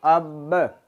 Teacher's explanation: دونوں ہونٹوں کے تر حصہ سے یہ با ادا ہوتا ہے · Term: قلقلہ